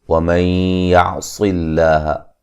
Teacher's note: وَمَن يَعْصِ اللَّهَ، یہاں نون ساکن کا ادغام مع الغنہ ہے، صاد کو موٹا ادا کریں